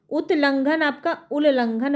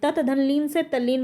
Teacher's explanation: ये त आपका कहां बदल जाता है ल में बदल जाता है अगर ये ल से मेल खाता है तो यही इसका त